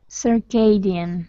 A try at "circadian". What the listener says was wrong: Circadian, right.